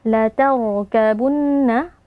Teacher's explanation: ra sukun yang sebelumnya berharakat fathah itu harus dibaca dengan tafkhim dengan mengangkat pangkal lidah